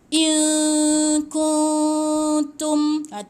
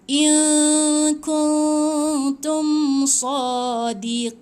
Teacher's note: Ni pun nun mati bertemu dengan ta. Jadi nun tak disebut dengan betul, tak sebut tepat pada nun. Jadi dia kena gantungkan sikit lidah. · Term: ikhfa